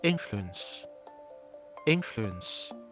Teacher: Try using an ''OO' from an unstressed syllable. For example, the ''OO'' in influence: Influence Influence Feel this unstressed ''OO''.